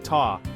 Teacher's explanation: Ta is pronounced ta with an open a like in father